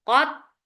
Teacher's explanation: there will be shidda on ta, and then with the fatha, the sound will be very short